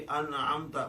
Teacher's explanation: अब देखिए, मैंने अनअमता में चूंकि नून के बाद ऐन आ रहा है तो मैंने नून को आवाज की प्रोमिनेंट पढ़ी कि अनअमता, मगर उसमें रुका नहीं मैं। इसी को इजहार कहते हैं।